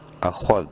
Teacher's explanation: وَإِذْ، حمزہ زبر ا، خو دال زبر خود، بولڈ لیٹرز میں سے ہے خو، منہ بھر کے پڑھیں گے